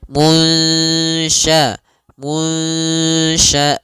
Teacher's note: kita samarkan nunnya kepada huruf syin munsya. Munsyaatu ya samarkan kepada makhraj huruf syin langsung.